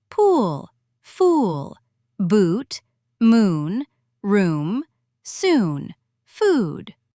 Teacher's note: Long OO. Tight, round, held longer.